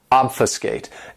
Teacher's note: this verb has three syllables and the stress is on that first syllable